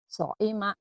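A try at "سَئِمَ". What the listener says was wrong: So'ima. So'ima. Bukan ain ya. So'ima. So'ima ya, jangan pakai ain. So'ima.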